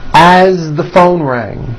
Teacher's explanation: As, you pronounce it with a voiced Z.